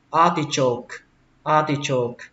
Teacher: Lên giọng âm đầu tiên a